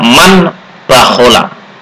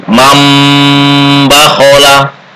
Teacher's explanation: Maka cara membacanya dengan menyuarakan atau merubah ya, merubah bunyi nun mati menjadi suara mim, bunyi nun mati atau tanwin menjadi suara m, mim, m, n menjadi m, dengan merapatkan dua bibir serta mendengung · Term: iqlab